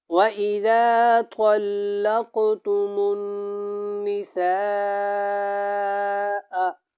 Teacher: یہاں پہ مد متصل ہے، اس کو لمبا کر کے پڑھیں، کھینچ کے پڑھیں